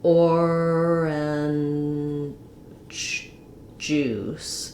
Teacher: I can't really make an unreleased j sound, but it does get a little bit devoiced. So it almost sounds kind of like orange juice.